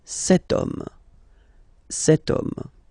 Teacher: H is not pronounced, so the first sound that we hear is O